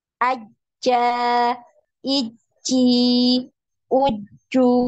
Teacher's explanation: untuk huruf Jim ini tertahan juga ya suaranya ketika ditasydid ya karena tidak ada aliran suaranya tidak ada aliran suara tidak ada aliran nafas